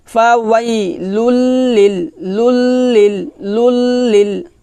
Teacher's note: এখানে মিলাবো তবে গুণ্য হবে না, কারণ তানবিনের পর কি আসছে, লাম আসছে